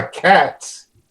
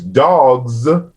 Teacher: So the S and the Z sound are allophonic in English in terms of the actual IPA values. And so, the plural Z becomes voiceless after voiceless plosives. So that's why cats is pronounced cats versus dogs, because the final consonant in the root morpheme dog is a voiced velar.